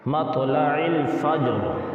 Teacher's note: اس فجر کی را جو ہے اگر ہم وقف کریں اس پر تو اس کو پھر پر پڑھیں گے